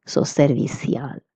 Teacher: if you're in Latin America, you will pronounce ci as s.